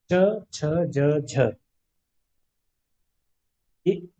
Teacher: च, छ, ज झ स्पर्श भी है और संघर्ष भी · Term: स्पर्श संघर्षी व्यंजन